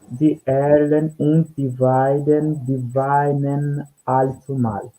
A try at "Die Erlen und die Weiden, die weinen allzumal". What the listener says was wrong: Exactamente.